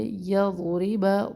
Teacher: یضرب ضاد موٹا پڑے، اس کو را کو باریک پڑھنا ہے